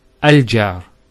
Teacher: So notice the sound in the beginning, al-jar. That sound, which in English is called a glottal stop, is actually the Hamza. It's not the alif.